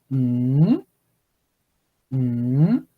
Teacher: ng, pull your tongue back with a rising tone.